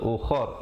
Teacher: Kalau kita pilih untuk waqaf di situ, ra-nya menjadi tebal.